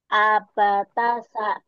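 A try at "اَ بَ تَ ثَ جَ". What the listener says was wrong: Jimnya kelihatan. Kelewat. Abatasaja. Abatasaja.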